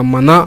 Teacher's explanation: ನಾಸಿಕದಿಂದ ಉತ್ಪತ್ತಿಯಾಗುವಂತಹ ಅಕ್ಷರಗಳು ಮೂಗಿನ ಸಹಾಯದಿಂದ ಉತ್ಪತ್ತಿಯಾಗುವಂತಹ ಅಕ್ಷರಗಳು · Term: ಅನುನಾಸಿಕ ಅಕ್ಷರಗಳು